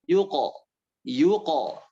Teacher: Kalau ada huruf qaf, qalqalah pantulannya tidak ditahan